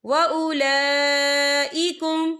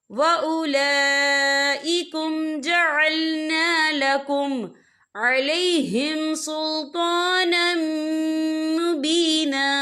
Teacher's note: وَأُولَئِكُمْ، یہ دیکھیں وَأُولَا لام کے اوپر کھڑی حرکات ہے اور اس پر مد بھی ہے. یہ مد جو ہے مد متصل ہے، اس کی مقدار 4 عدد کے برابر ہے، تو ہم یہاں 4 عدد کے برابر کھینچے پڑیں گے